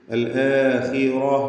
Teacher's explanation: ഖാഇന് കസ്റാണ്, കുറഞ്ഞ തഫ്ഖീം കൊടുക്കുക. അൽ ആഖിറ റാഇന് തഫ്ഖീമാണ്.